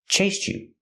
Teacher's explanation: you can link the sounds and say chased you with a ch sound